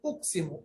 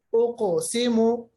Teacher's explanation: قاف پہ جب جزم ہوتا ہے قاف کی آواز واپس آتی ہے, ایکو ہو جاتا ہے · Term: قلقلہ